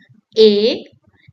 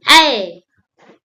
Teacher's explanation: the mouth opens wider while pronouncing I